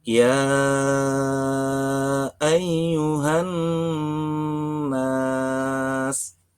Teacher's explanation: Warna biru pada bacaan lafadz ya ayyuha adalah mat jaiz munfasil. Cara membacanya adalah dipanjangkan selama 5 ketuk.